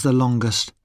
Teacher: We say the in superlatives with a weak sound, the, when the following adjective starts with a consonant. We say the ending est with a schwa sound